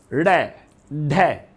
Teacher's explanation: जिन व्यंजनों के उच्चारण में जीभ ऊपर जाती है, मुख की छत यानी मूर्धा को टच करती है और एक झटके से नीचे तेजी से फेंक दी जाती है, ड ढ, मूर्धा को टच करती है। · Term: उच्छिप्त